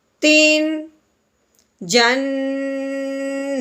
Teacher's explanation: تنوین پہ غنہ نہیں کرنا، بغیر غنے کے اظہار کے ساتھ پڑھنا ہے